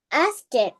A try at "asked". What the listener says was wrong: Okay, this one we read it as asked without ed. Asked. Not asked. Asked. Asked.